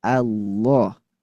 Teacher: Lam pertama tipis lalu ke tafkhim Allah.